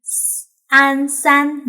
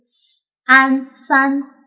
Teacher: the pinyin s sounds a little more screechy than English s